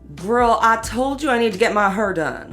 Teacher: a feature in African American English in places like St. Louis and Memphis called the near-square nurse merger, or R centralization.